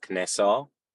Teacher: just in our pronunciation, the E's become eh